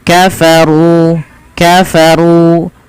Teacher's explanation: runya dibaca dengan tebal dan di sini ada ro tafkhim